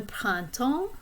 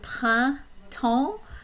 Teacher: there are two nasal vowels in that word. Prin and temps.